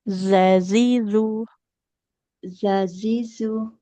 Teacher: Ujung lidahnya ditempelkan ke ujung gigi seri atas. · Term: huruf zalnya